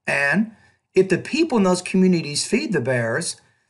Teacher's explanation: I was trying to put a slightly higher pitch at the end of each thought group. And once I got to the end of the sentence, my tone fell.